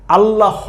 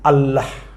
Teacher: নিচের হসন্ত দিয়ে আল্লাহ হ এভাবে বলতে হবে না বলবেন আল্লাহ শেষে হ এর একটা সাউন্ড কিন্তু আছে হালকা করে